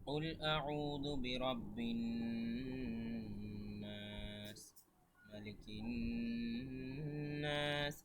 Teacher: নুনের উপরে যে চাপ দিচ্ছি এটাকে বলে গুন্না